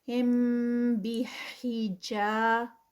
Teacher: میم ساکنہ کے رول میں اخفاء شفی، جب میم ساکنہ کے بعد با آتی ہے تو وہاں پر ہم تھوڑی دیر رکتے ہیں، یعنی اس کو ہولڈ کرتے ہیں